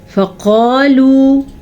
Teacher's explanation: قاف موٹا ہے تو قاف کو موٹا کر کے پڑھیں گے، الف مدہ بھی ہے تو کھینچ کے بھی پڑھیں گے.